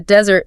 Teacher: if you're talking about the dry land, the desert, the stress shifts. It goes to the first syllable.